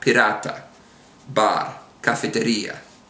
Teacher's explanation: a single R is a what's sometimes called a tap, with your tapping your tongue on your hard palate or right behind your teeth. You could think of it actually as a D type of a sound in English.